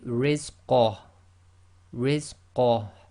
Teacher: you've got to bring a tiny bit of the ha from the bottom of your throat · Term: ha goes sakin